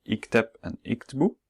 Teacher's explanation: usually when there's vowel just before the end consonant, in the plural, as in ikteb, iktbu, that vowel disappears